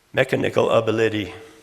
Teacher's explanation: generally the second syllable is is stressed or accented mechanical ability all I did was remove that accent or or stress from the second syllable and put on the first and third